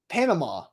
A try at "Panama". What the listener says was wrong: No. You're saying it the Southern way. You're saying ma, which you throw a W on the end of everything. Panama.